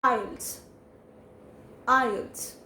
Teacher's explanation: It is not islets, it is IELTS. The T sound in it, we have to minimize it, and we don't need to emphasize the T sound, and it will come as IELTS.